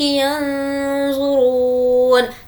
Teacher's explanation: ناک میں آواز کو چھپانا ہے کیونکہ نون کے بعد ضا ہے اور یہ ضا حرف اخفا کے 15 لیٹر میں سے ہے.